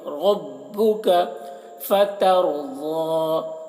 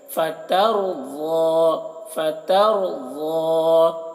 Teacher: یہاں پر را کو پر پڑھیں گے اور ضاد کو بھی پر پڑھیں گے